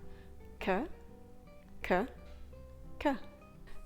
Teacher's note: the sound is actually being made when you release the tongue it drops off the pallet and allows the air to pass through for our RS air we do not want that release we